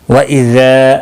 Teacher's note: الف مدہ ہے، ایک الف کے برابر کھینچ کر پڑھیں گے۔